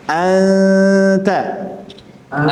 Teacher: nunnya tidak izhar artinya n-nya hilang ya. Tapi ketika kita baca anta masih tersisa nunnya. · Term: ikhfa